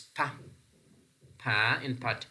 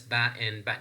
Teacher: while we are producing P we spend much more muscular effort which means we are spending much more energy than the production of ba when we producing ba we spend less muscular energy